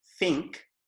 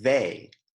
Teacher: Unvoiced é tipo think, e voiced é tipo they. Uma dica para TH, lembra que unvoiced geralmente é para palavras com ação, e voiced geralmente é mais para pronomes.